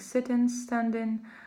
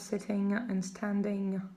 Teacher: the suffix ing is pronounced in, like sitting, standing, instead of sitting and standing. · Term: Cockney dialect